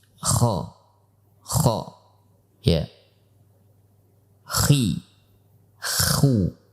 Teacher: Karena pangkal lidah kita terangkat pada saat mengucapkan huruf kha tersebut, maka bibir kita pun akan terpengaruh sedikit. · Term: pangkal lidah dalam keadaan terangkat